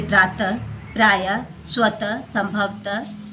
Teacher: बोलने के कम में जो उच्चारण करते हैं तो अंत में हा की तरह इसका उच्चारण किया जाता है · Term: विसर्ग